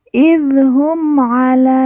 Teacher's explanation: Dal di ujung kita sukunkan atau kita matikan karena waqaf atau berhenti